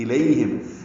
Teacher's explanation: لی یا الین ہے، نرمی سے ادا کریں گے